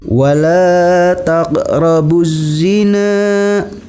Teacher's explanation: Alif lamnya tidak nampak atau alif lamnya tidak dibaca tapi langsung dimasukkan kepada huruf zai. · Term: alif lam syamsiah